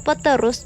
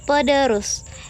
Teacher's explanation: Asimilasi dapat dibedakan menjadi tiga macam, yaitu yang pertama ada progresif, yaitu bunyi yang diubah itu terletak di belakang bunyi yang mempengaruhinya. Contoh, perubahan bunyi T menjadi D pada kata peterus menjadi pederus